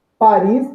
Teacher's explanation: no caso de Paris, a sílaba tônica é a última sílaba, logo ela não será acentuada.